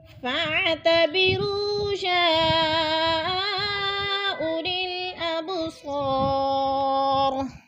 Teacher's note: یا اولی الابصار یا پہ مد متصل ہے، 4 الفی مد ہے، 4 الف کے برابر ہم نے اس کو کھینچ کر پڑھنا ہے. اب با ساکن ہے اور حروف قلقلہ میں سے ہے تو ادھر قلقلہ کریں گے · اب با ساکن ہے اور حروف قلقلہ میں سے ہے تو ادھر قلقلہ کریں گے. اور صا پہ الف مدہ ہے، الف مدہ کو ہم ایک الف دو حرکات کے برابر لمبا کر کے پڑھیں گے